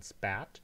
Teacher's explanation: the aspirated p becomes unaspirated whenever it is preceded by an s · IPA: [spɑt]